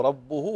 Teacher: كانه بالغ في ضم الهاء فحول الهاء الى واو